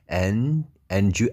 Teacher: Oke, kalau di Amerika dibaca gini, believe you can gitu ya, can, and you, D ketemu Y itu bisa dibaca J guys ya